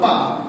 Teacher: पा बोलो पा तो आपका होठ टच होगा कि नहीं?